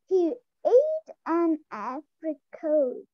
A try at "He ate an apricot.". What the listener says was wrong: Not coat, apricot. Not coat, caw.